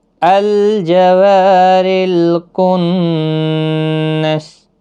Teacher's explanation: را زیر کی وجہ سے باریک پڑھا جائے گا. رل کنس نون مشدد پر غنہ ہوگا اور وقف کی صورت میں سین ساکن پڑھا جائے گا.